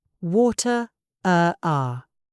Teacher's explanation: Americans are rhotic. They say water, are.